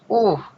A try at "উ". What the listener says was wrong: উহ না উ, না হামজা উ উ উ, এমন আয়ের উচ্চারণ হ্যাঁ, উহ না তো হা হয়ে গেল।